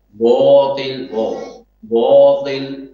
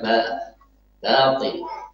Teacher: nunnya tebal, alifnya juga ikutan tebal · menebalkan suara alif ketika harus dibaca dengan tipis di waktu yang seharusnya dibaca dengan tipis.